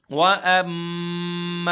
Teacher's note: मदे मुफसिल है। हम यहां पर तीन अलिफ के बराबर खींचेंगे।